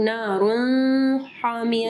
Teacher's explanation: نون ہم لوگ کلیئر پڑھ رہے ہیں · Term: اظہار